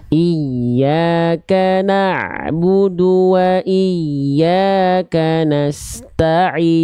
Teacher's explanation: sedikit dialirkan ain sukunnya bunda